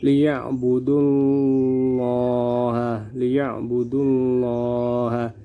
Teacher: Lafal Allah di sini berada setelah huruf yang bertanda baca dhammah, maka dibaca tebal. Lafal Allah berada setelah huruf yang bertanda baca dhammah. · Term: tafkhim